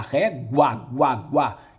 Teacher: eu tenho dois sons vocálicos juntos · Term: ditongo